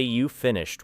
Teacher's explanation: Then say you finished with a rising voice, and the same words become a question.